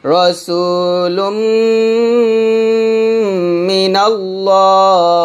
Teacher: একইভাবে নুন সাকিন ও তানবিনের পর মিম আসলে গুণ হবে, যেমন রসুলুম, লাম মিম দুই পেশ লুম দুই ঠোঁট মিলে গুণ করবেন